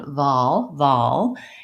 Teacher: even though this L is in the middle it is a dark L but I don't really have much of a schwa before it